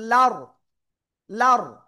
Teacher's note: র সাকিন, তার ডাইনে জবর মোটা আওয়াজে পড়তে হবে